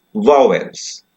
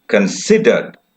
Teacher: stress is on the first syllable, or accent is on the first syllable, and here stress or accent is on the second syllable